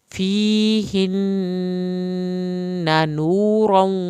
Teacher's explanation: نون کی شد پہ ایک الف کے برابر دیر لگائیں گے ، نورا، را کو پر کریں گے، نورا، واو کی شد